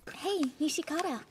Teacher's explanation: pronounce it with the I, making it four syllables long